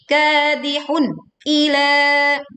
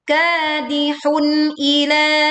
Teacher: Innaka kadihun, ka dibaca panjang 2 harokat, kadihun, jelaskan bunyi dhammah tanwin tidak melebur ke hamzah dan hamzah pun dibaca dengan jelas. Hati-hati tidak saktah seperti kadihun ila, tidak saktah atau terputus seperti itu, atau memantul atau dengan istilah lain tawalud.